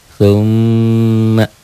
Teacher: Nun dan mim bertasdid ini juga dibaca dengung ke hidung itulah gunah dengung ke hidung · Ya ditahan dobel dan dengung